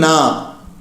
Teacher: நாவின் நுனி மேல்வாய் அன்னத்தின் முன்பகுதியை தொடுவதால் பிறக்கும் எழுத்து